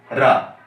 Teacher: जीभ प्रकंपन अर्थात कंपन हो रहा है रा को उच्चारण करने में, तो इसका उच्चारण स्थान क्या हो जाएगा, लुंठित वर्ण कौन सा होगा, रा हो जाएगा।